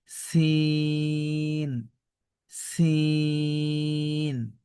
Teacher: আমাদের সিন অক্ষরটা শীষ সহকারে পড়তে হয়